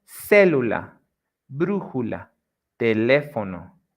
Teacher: Esdrújulas is when the stress syllable goes in the third, in the third to last.